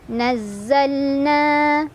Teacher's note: Nahnu nazzal lamnya lam mutlak, kita baca secara jelas lam sukunnya. Nazzalna na madhabi'i karena ada alif sebelumnya fathah, dibaca panjang dua harokat